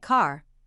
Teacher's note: American pronunciation differs is the way R is pronounced in words in the general American pronunciation the letter R is always pronounced